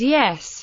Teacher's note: consists of a palatal glide followed by a monophthong rather than a rising diphthong